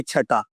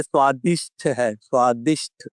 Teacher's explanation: ये अल्प प्राण है ट, और ठ है महाप्राण। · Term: महाप्राण ध्वनि